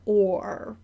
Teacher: we have to round when we say O and then pull it back real fast for the R